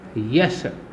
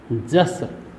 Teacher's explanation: य का परिवर्तन ज में और तालव्य श का परिवर्तन दंत्य स में, यश का जस। ऐसे ही शब्द है योगी।